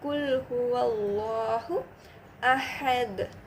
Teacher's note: நம அல்லாஹு அப்படி நம படிப்போம் லைட்டா இல்லாம ஹெவியா படிப்போம் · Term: லாமே ஜலாலா